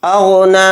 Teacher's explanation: نون پر کھڑا زبر ہے تو نون کو 1 الف کی مقدار کھینچیں گے، یہ یا نہیں پڑھا جائے گا، یا کے اوپر کچھ بھی نہیں ہے۔